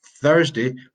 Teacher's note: Tuesday doesn't have the tongue going out.